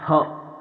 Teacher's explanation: अगला है स्वर यंत्र से, यानी ह, ह को बोलते समय हमारे कंठ का जो मध्य भाग होता है, जिसे ध्वनि यंत्र भी कहा जाता है या स्वर यंत्र, वहां से होता है, इसलिए इन्हें स्वर यंत्र या ध्वनि यंत्र कहा जाता है।